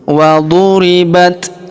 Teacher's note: huruf ta berharakat sukun ya kita berikan hembusan tipis